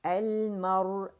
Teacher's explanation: جب را ساکن ہوتی ہے اس سے پہلے فتح آتی ہے تو اسے موٹائی سے پڑھا جاتا ہے